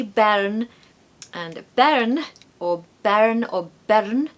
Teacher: I'm tapping my r or I'm just really pronouncing the r